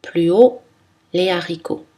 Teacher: Pas de liaison avant un H aspiré.